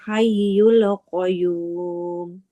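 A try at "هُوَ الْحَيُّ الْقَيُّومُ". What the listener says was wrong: Lamnya enggak boleh memantul.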